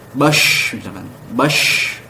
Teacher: menyebarnya udara dalam mulut ketika diucapkan. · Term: at-tafasyi